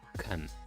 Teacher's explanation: you feel the puff of air while pronouncing the C sound